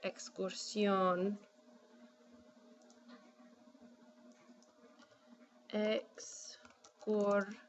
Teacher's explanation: Now my word ends in S, so remember if a word ends in N, S, or a vowel, it's supposed to get accented on the second to last syllable. We still want our O to carry the stress, but now the O has shifted positions.